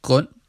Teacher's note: the Danish word ends in n, followed by a glottal stop or creaky voice.